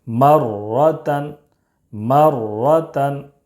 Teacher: تا دو زبر تن، مرتن. را مشدد پر زبر ہے، اس لیے را مشدد کو پر پڑھیں گے.